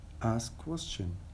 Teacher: Instead of asked questions in fast speech, we drop the te sound, so it becomes as if it were in present form.